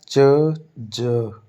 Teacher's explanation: यह शुरू प्लोजिव साउंड की तरह होता है और खत्म फ्रीकेटिव्स की तरह होता है। यानी शुरू में प्लोजन होता है। · शुरू में प्लोजन होता है, बाद में हिसिंग साउंड आती है, ठीक है। पहले रोक कर फिर फ्रीकेटिव की तरह हवा छोड़ते हैं। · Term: एफ्रीकेट्स, एफ्रिकेट्स